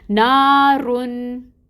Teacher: تو رو پہ جو تنوین ہے اس کو ظاہر کریں گے، نون کی آواز کو ظاہر کر کے پڑھیں گے